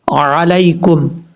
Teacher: یہ یا لین ہے، یا مدہ نہیں ہے، کیونکہ یا ساکن سے پہلے زبر ہے، اس لیے یا لین ہے، اس کو لمبا نہیں کریں گے۔